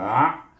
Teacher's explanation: Kemudian kita pergi kalimah yang kedua, hamzah pada sejata bunyi a, kemudian dimatikan dengan ain jadi bunyi a. A bunyi, iaitu ain, ingat iaitu makhrajnya di tengah-tengah halqum. Hamzah di bawah, jadi dekat a, daripada bawah pangkal halqum pergi ke tengah halqum.